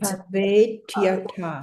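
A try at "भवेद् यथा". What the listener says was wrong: It's a long A.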